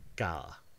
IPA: kaða